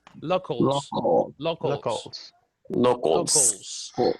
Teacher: now the pronunciation of this locals it's almost like loco but you open the second oh like similar to an ah